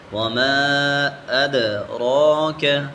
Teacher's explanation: میم کے اوپر مد ہے تو ہم اس کو ہم کھینچیں گے۔